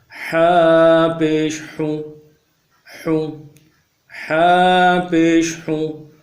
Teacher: حا کو جماؤ کے ساتھ اور مضبوطی سے نکالیں گے، گلے کے اندر سے نکالیں گے، سینے کی طرف ہے۔